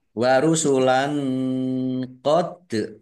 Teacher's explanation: fathah tanwin bertemu dengan huruf qof bacaan Ikhfa dibaca samar-samar